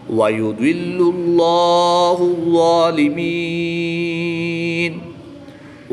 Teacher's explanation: ضا حروف مستعلیہ میں سے ہے تو اس لیے اس کو پر یعنی موٹا پڑھیں گے۔ ضا کے اوپر کھڑی زبر ہے تو اس کو ایک الف یعنی 2 حرکات کے برابر لمبا بھی کریں گے۔ · جلالت اللہ عز و جل کے لام سے پہلے لام پر پیش ہے تو اس لیے اس لام کو بھی پر یعنی موٹا پڑھیں گے